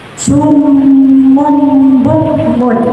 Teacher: Di situ ada domah tanwin bertemu huruf ba, disebut bacaan iklan, artinya mengganti. Jadi domah tanwin dibaca mati mendengung.